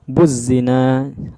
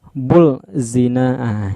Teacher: ketika dibaca huruf lemnya tidak tampak maka buzina lemnya nggak nampak kalau nampakkan semisal kita bacakan bullzen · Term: alif lam syamsiah